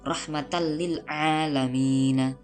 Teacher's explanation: suara tanwin atau nun mati pada tanwin itu dileburkan dan langsung dimasukkan kepada huruf lam tanpa adanya dengung. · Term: idgham bila gunnah